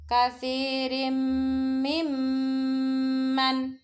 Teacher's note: tanwin bertemu huruf mim. Disebut bacaan idgham bi gunnah, melebur dan disertai dengung.